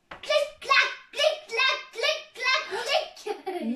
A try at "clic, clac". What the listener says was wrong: Non, t'as dit trop vite.